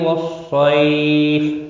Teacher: صاد مستعلیہ ہے، پر پڑھا جائے گا۔ صی یا لین ہے، فا وقف کی صورت میں ساکن پڑھا جائے گا، 3 سے 5 الف کے برابر کھینچ کر وقف کریں گے